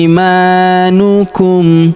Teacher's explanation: Huruf i kita panjangkan dua harakat karena ya sukun di depannya. Ima huruf ma kita panjangkan dua harakat karena alif kecil di depannya